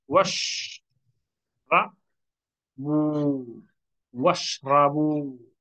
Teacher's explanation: Hamza al wasli in the middle silent. The beginning you can pronounce.